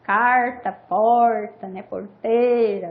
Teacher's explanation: É comum por aí vocês ouvirem o R retroflexo, o famoso Rão, o famoso R caipira.